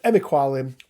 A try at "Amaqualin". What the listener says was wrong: You've gone from Amaqualin to Emiqualin.